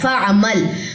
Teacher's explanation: عین کو گلے کے درمیان سے نکالی ہے، آواز یہاں پہ متوسطہ ہوگی کیونکہ توسط آئے گا نا آواز میں، کیونکہ یہ حروف متوسطہ میں سے عین آیا ہے.